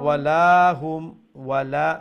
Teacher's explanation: make sure you stretch the la, lam alif or la, one alif long